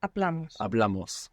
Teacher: with Amos we're adding on two syllables and the accent is is going on the second last syllable